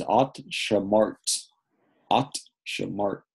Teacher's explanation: Two consonants at the end with no vowels to help us get that out.